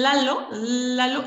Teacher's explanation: el punto de articulación son los alveolos